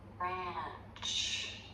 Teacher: >> This is the underside of my tongue because the tip is pulled back and up. >> There's so much jaw drop here because I'm moving into position for the A vowel. >> You'll see my tongue tip come forward again for that vowel.